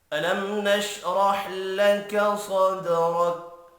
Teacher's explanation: میم ساکن کے بعد نون ہے، اظہار شفی ہوگا، غنہ نہیں ہوگا۔